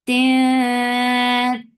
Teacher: This ikhfa is light, so keep your tongue straight.